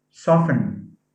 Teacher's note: soft has a t as a phoneme but soften has a silent t